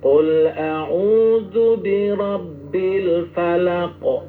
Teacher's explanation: Qalqalahnya tetap huruf utuh qof cuma dikurangi porsinya.